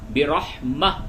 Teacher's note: یہاں پہ یہ تنوین ہے یعنی تا دو زر تن، وقف کی حالت میں تو اس تا کو ہا سے بدل دیں گے